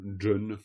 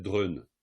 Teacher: on a un R un peu mouillé